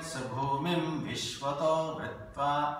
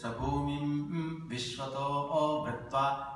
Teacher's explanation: In Rigveda, Sabhumim Vishwato Vritva. The Swarita is elongated.